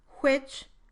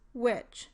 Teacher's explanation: Some speakers produce a voiceless version of the labiovelar glide in words that begin with WH. This is more common in speakers from southern states in the United States. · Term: voiceless W